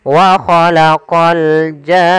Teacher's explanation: Panjangkan jannya dulu 6 harokat baru masuk ke nun. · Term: mad lazim kalimi musaqqal